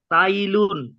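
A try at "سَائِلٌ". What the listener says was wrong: সাইলুন, সাইলুন, সা এর পরে টান হবে, সা এর পরে টান হবে, সাইলুন।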